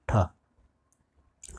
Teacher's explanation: जो ठ वर्ण है वो महाप्राण है, मूर्धन्य है।